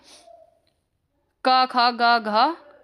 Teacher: पहला जो वर्ग है आपका क वर्ग, उसका उच्चारण स्थान होता है कंठ।